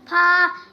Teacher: নিচে ঠোঁটের পেট সামনে উপরে 2 দাঁতের আগার সঙ্গে লাগাইয়া ফা